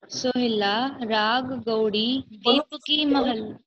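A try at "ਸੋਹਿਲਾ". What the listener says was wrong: आप जी पढ़ रहे हो इस तरह ऐ पाठ असल च इस तरह है सोहेला आप जी सिहारी दी जगह ऐ ला ला रहे सोहेला सोहेला नहीं सोहेला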